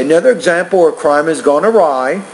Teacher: The tone at the end of that first thought group should be a little bit higher.